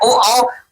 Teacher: फिर आया ओ औ कंठ और ओष्ठय को।